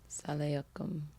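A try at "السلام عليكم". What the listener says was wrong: You're missing one syllable. Salam alaikum.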